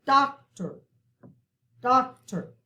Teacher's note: we kind of stress that first syllable more